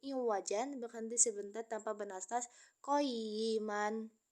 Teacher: terdapat bacaan sakta yaitu berhenti sejenak tanpa bernafas sehingga bunyinya menjadi iwajan, berhenti sebentar tanpa bernafas qayiman.